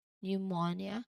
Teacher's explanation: the P at the beginning is silent before the N, so it's pronounced as pneumonia. You start directly with the N sound.